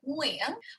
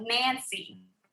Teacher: the NG Vietnamese is back of your throat. So you should feel it back there like Nguyen, whereas the N in English is on the tip of your tongue, right? Like Nancy, right?